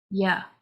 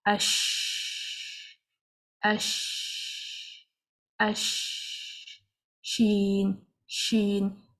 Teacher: Along with the sound, the breath also runs because the letter sheen has a hums in it. And hums means flowing of the breath.